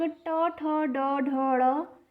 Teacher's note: मूर्धन्य यानी कि जब इसका उच्चारण आप करेंगे ट वर्ग का, तो आपकी जीभ जो है वह थोड़ी सी मुड़ जाएगी और मुड़कर तालु का स्पर्श करेगी। इसी को कहते हैं मूर्धन्य।